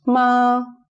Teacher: It's high and flat. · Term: first tone